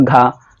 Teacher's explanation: में कंपेयर करके देखिए ग और घ घ को थोड़ा खींचना पड़ रहा है ना यानी वायु ज्यादा निकल रही है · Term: महाप्राण